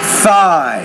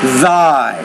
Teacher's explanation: trouble here between the voiceless and voiced interdental consonant